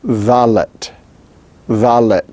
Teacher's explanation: it is interdental fricative and voiced